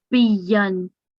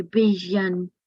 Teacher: Because there is a shad, yeah. Because there is a shadda, so you need to be stressing on the ya.